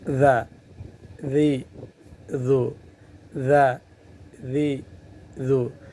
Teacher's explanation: زبان اوپر کے اور نیچے کے دانتوں کے درمیان میں بھی آ جائے گا، زبان درمیان میں آ جائے گی، اور جس کی وجہ سے سیٹی کی آواز نہیں نکل پائے گی ۔ ذا، ذی، ذو، ذا، ذی، ذو، دونوں دانت بند ہو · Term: ذال